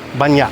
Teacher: So, the word meaning many, which, if you're reading it off the page, would be banyak, you kind of swallow that K and it's banyak